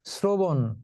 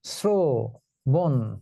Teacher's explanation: র ফলাযুক্ত তালব্য স দন্ত স এর মত উচ্চারিত হয়।